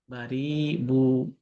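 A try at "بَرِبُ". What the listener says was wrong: বুতে টান হয়ে যাচ্ছে ভাই, বারিবু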